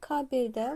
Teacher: Kabel, briqada, atlas, fonetika. Deməli, kabeldə vurğu düşür birinci hecayəyə